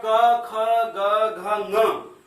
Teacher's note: वो क जहां से उच्चारित हो रहा है वहीं से ङ भी उच्चारित होगा, क्योंकि क वर्ग का संपूर्ण क वर्ग का एक ही उच्चारण स्थान है।